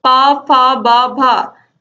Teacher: पा, फा, बा, भा इन चारों का उच्चारण स्थान होता है ओष्ठ